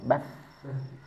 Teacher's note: segi suara dia bersifat rakhah, tekanannya tidak begitu kuat bahkan mengalir begitu saja. Tahunya ketika dia sukun bas.